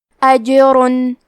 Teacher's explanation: کلمت اجرن میں حرف الجیم پہ جزم ہے. جیم بھی حروف القلقلہ میں سے ہے تو ہم یہ حرف کو ہلاتے ہوئے یہ کلمہ کو پڑھیں گے